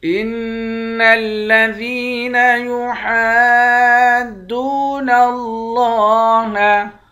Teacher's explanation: نون مشدد پر غنہ کریں گے، ذال کو یا کے ساتھ ملا کر یا کو ایک الف کے برابر کھینچ کر پڑھیں گے، ہا کو دال کے ساتھ ملا کر پڑھیں گے، اور یہاں پر مد ہے، اس مد کو 5 الف کے مقدار یعنی 5 الف کے برابر کھینچ کر پڑھتے ہیں۔